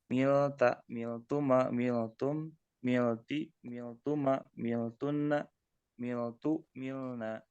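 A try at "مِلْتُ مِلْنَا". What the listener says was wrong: Ya, miltu milna. Betul.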